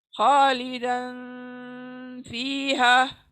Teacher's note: Next, खालिदन, खालिदन फीहा। रुक जाए, दन के पर रुक जाए, लेकिन पुल करे साउंड को नाक में